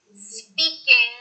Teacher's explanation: you say the N quickly your tongue doesn't go up to the top of your mouth and then you force out the G from the back of your throat